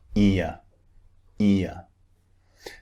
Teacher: just like the word ear it's two vowels squeezed together ear the mouth starts wide and ends in a neutral position